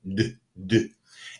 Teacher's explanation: The d sound is voiced. That means that your vocal cords vibrate when you say the sound d, d. And there's no puff of air when you pronounce d.